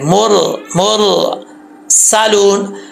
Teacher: सीन में सीटी आएगी, अगर सीटी नहीं होगी तो सीन नहीं पढ़ा जाएगा सही तरीके से, गलत हो जाएगा। · रा साकिन से पहले पेश है मीम के ऊपर, ठीक है, तो इसको पुर पढ़ेंगे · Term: रा पुर